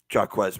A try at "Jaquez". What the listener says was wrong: That's Jay. We've been over. That is Jay, not Jack.